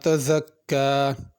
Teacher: تزکا میں زا ہے، اس کو تزکا ذال کر کے نہیں پڑھنا، اور آخر میں کھڑی زبر ہے، اس کو کھینچ کے پڑھنا ہے۔